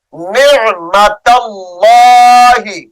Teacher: اس میں جلالت اللہ کا لام موٹا کریں گے